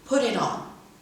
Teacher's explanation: The flap may even appear at word boundaries, as in put it on. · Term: voiced flap